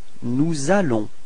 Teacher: So you can notice the liaison between S and A.